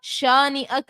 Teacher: الف سے پہلے زبر ہے، الف مدہ، ایک الف کی مقدار کھینچا